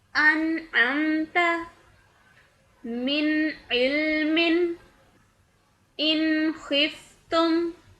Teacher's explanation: نون کی آواز کو صاف اور واضح کر کے پڑھتے ہیں، اور دیگر ساکن حروف کی طرح اس پر آواز ٹھہراتے ہیں لیکن لمبا نہیں کرتے۔ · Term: اظہار